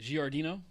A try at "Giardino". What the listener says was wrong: You're putting a little too much emphasis on the wrong syllable.